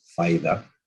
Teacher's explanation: Vocalization is associated with the Cibao, in which a tap or a lateral is converted into a high front vowel